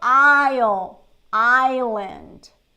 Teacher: We don't say the S here. We don't pronounce the S.